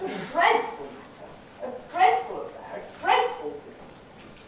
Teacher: these empty categories are de-accented and go in the tail